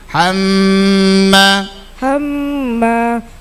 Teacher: gunna musyaddadah mim tasdid dengung tiga harakat